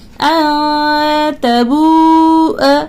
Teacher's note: نون ساکن کے بعد حروف اخفا تا ہے، اخفا کا بھی غنہ آپ کو کرنا ہے